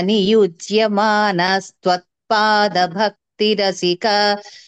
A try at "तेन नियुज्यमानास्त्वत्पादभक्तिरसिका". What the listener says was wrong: తేన నియుజ్యమానా అని దీర్ఘం వినపడలేదు. నియుజ్యమానాస్త్వత్పాద.